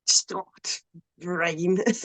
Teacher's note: I think the actual pronunciation of it has like a glottal stop in it, so it's like Stort Rain.